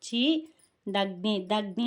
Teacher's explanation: దగ్ని అన్నప్పుడు దాన్ని ఒత్తి పలకాలి. చీ అనేది మామూలుగా పలకాలన్నమాట.